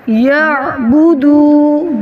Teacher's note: عین ہے ساکن تو نرمی کے ساتھ گلے میں آواز روکیں گے